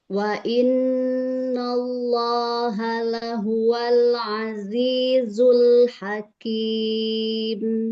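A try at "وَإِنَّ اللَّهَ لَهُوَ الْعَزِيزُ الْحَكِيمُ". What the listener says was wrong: Ya, nallo na buka fathah. Wa innallaha apa namanya? Nallo na fathahnya jangan nggak terbuka, itu tadi kurang terbuka. Wa innallaha lahuwal azizul hakim.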